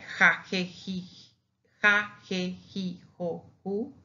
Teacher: that sound of [x]/[j]. Of house, but strong.